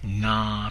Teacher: nah pronounced with a long stretched out long vowel or a long tone happens to be the first person pronoun I